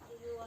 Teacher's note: Perubahan letup apikodental menjadi letup laminoalveolar karena adanya pengaruh secara progresif dari bunyi geseran laminoalveolar. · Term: Asimilasi progresif